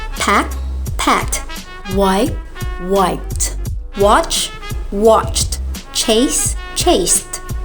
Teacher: means it's like a whisper and your vocal cords don't vibrate the t sounds blends in when ed is placed that means no additional syllable